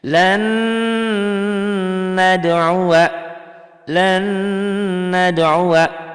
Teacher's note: Tapi yang jelas kentara bedanya, asalnya n-nya lan nad'uwa, n-nya menjadi 3 tuh. Jadi ada gunahnya. Lan nad'uwa, lan nad'uwa. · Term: idgham bigunah